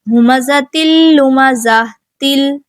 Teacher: تا پہ تنوین ہے اور پھر لام آ گیا، یہاں پہ بھی ادغام ہو رہا ہے لیکن غنہ کے بغیر